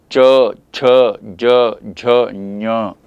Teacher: ನಾಲಿಗೆ ಕೆಲಸ ಶುರುವಾಗುತ್ತೆ, ಮೇಲೆ ಅಂಗಳಕ್ಕೆ ಹೊಡೆಯುತ್ತೆ